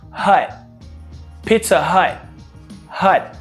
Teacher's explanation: You know, the T is ready to be pronounced. Your tongue will touch, you know, your alveolar ridge right behind your front teeth, but you don't release that sound. You don't say Pizza Hut. · Look at the pronunciation of the T at the end of the word hut. We don't actually release that T.